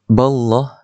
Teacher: lafzul jalalah di situ dibaca dengan mufakhamah. Maksudnya tebal. Sebab apa? Ba itu berbaris fathah.